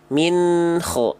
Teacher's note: Antara bunyi n dengan ho nggak boleh ada jeda.